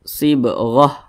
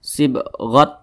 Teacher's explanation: di atasnya ada huruf Ta Maka itu namanya ta marbutah Jadi kalau dia berwaqaf ya maka huruf ta dirubah menjadi huruf Hah